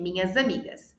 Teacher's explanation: O som do S vira um som de Z. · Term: linking sounds